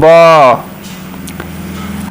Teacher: तो ये जो है आपकी हिंदी की जो है ये आपकी आती है ओष्ठ ध्वनि ब, क्योंकि ओठ जो है सट रहे हैं बोलने पे ब